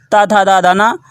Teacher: ये दंत से उच्चारित होते हैं, इसलिए इन्हें दंत वर्ण कहते हैं